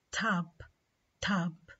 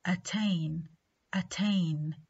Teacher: T is aspirated when it occurs initially in a stressed syllable